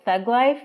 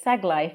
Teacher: the th sound in three this one usually changes into an s sound